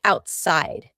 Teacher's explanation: The word outside has a T in the middle, but because this word is kind of two words put together, out and side, we're going to have a stop there in the middle. This is a little bit of an exception.